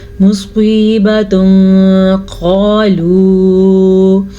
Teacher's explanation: تنوین کے بعد حروف اخفا میں سے قاف آیا ہوا ہے تو یہاں پہ اخفا کا قاعدہ ہو رہا ہے تو ہم تنوین کو چھپا کے غنے کے ساتھ پڑھیں گے